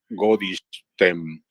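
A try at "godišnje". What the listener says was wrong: Godishnie. Esa palabra Godishnie. Godishnie. Es S, se transforma en S con kvachica, es decir, una S reforzada por influjo de la palatal posterior, NJ.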